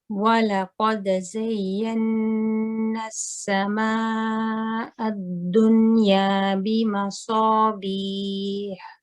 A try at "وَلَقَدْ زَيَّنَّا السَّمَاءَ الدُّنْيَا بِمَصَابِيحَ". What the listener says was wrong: Okay, just for you, next time we recite this, inshallah, just pay attention to the hamza. I want it to be lighter. Okay, so I don't want ah, I want like a sound, and also the meme.